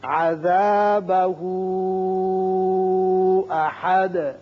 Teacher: مد منفصل ہے، 3 الف کے برابر آپ کھینچیں گے. یہاں وقت کی صورت میں دال جب ساکن ہو رہا ہے تو اس کی صفت قلقلہ ادا کریں گے.